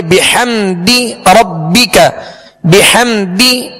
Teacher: دال کو کھینچیں گے نہیں، دال کے نیچے زیر ہے لہذا آواز کو گرا کر ادا کریں گے